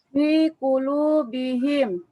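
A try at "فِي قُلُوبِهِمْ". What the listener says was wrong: Benar bacanya.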